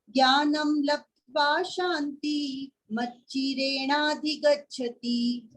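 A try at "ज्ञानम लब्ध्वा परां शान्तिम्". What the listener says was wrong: एक वर्ड छोड़ दियो, पराम शांति। लब्ध्वा पराम शांति। पराम, ज्ञानम लब्ध्वा पराम शांति।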